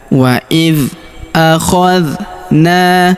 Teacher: Huruf na kita panjangkan dua harakat karena terdapat alif di depannya. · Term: panjangkan 2 harokat